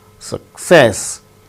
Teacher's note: Success, with stress on second syllable